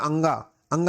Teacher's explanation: अनुस्वार में नाक का प्रयोग थोड़ा ज्यादा होता है मुंह से आवाज कम निकलती है